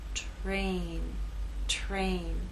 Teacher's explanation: t is voiceless R begins voiceless and takes on a voice sound